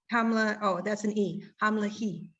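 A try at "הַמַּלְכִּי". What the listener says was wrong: Very good. Look at it again. Hamlachi.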